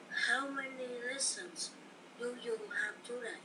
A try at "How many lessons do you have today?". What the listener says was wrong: Now, do you have today? How many lessons do you have today? Cái chữ today đừng có lên giọng bạn.